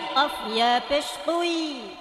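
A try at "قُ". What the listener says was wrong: এখানে কু, ঠোঁট গোল করতে হবে, ঠোঁট রাউন্ড করতে হবে, গোল একদম সামনের দিকে ঠোঁটটা নিয়ে আসতে হবে।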